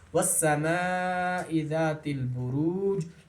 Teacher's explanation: بروج جیم پر رکنے کی حالت میں، وقف کی حالت میں قلقلہ ہو رہا ہے